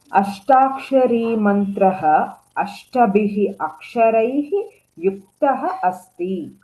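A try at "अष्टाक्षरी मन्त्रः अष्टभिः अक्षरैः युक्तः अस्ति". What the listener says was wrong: Well read.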